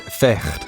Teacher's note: In Dutch, fight is vecht, pronounced with a guttural sound.